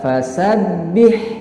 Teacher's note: mempunyai sifat al-hamas, yaitu keluar nafas atau keluar angin dari mulut kita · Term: sifat hamas